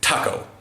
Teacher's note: I'll get a little bit more explosive with my T's